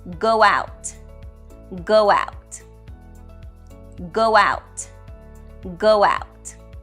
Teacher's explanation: we will Connect using the W sound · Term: vowel to vowel linking